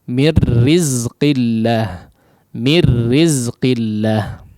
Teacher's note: sifat ataupun makhraj daripada huruf nun sudah tidak terlihat sama sekali, masuk dengan sempurna kepada huruf ra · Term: idgham yang kamil